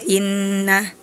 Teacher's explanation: Harusnya penekanan gunah itu dua harakat. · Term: gunnah